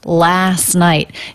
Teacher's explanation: when they're in two different words is often dropped last night it's just the s sound into the n sound last night and then we have a stop t at the